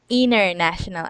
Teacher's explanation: you can say international and just forget about the T